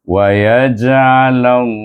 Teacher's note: Allah itu dibaca dengan tebal 2 harakat. Hu baru 1 harakat.